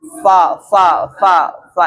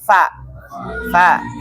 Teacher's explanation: berarti yang benar adalah bibir bagian dalam pertemuan dengan gigi atas